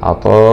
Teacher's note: ألف مد واجب متصل همزة فتحتين مع الإظهار الحلقي